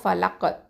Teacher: கல்கலத்து சுகரா கொடுக்கணும், லைட்டாக கல்கலா பண்ணணும்